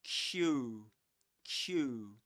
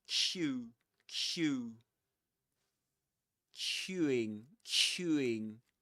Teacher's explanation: The lips go forward. Q. Q Q. And they get quite rounded.